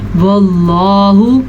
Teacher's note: واللہ، اللہ کا نام پر پڑھنا ہے کیونکہ اللہ کے نام سے پہلے حرف پہ زبر ہے۔